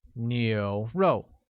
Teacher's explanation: with a mid-rising tone on U, a falling tone on O, making it 牛肉